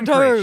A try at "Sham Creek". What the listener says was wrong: which you pronounced as Shim Creek.